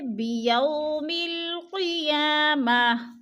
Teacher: وہ ساکن سے پہلے یا کے اوپر زبر ہے تو وولین کو لمبا بھی نہیں کرنا اور جھٹکا بھی نہیں دینا ، بھی آرام آرام سے ادا کرنا ہے، جیسے بیوم القیامہ،